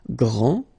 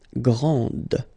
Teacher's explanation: This final D is not pronounced.